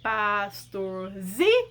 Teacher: a sílaba tônica mais forte é o zi. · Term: paroxítona